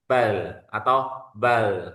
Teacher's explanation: inhirafnya huruf lam dipalingkan ke kiri atau ke kanan lidahnya tadi. Misalkan bal itu ke ke lidah ee ke kiri ya.